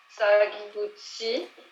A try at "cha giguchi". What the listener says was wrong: Cha giguchi, c'est un cha. Tu fais comme Fabien, tu prends les cha pour des tsa.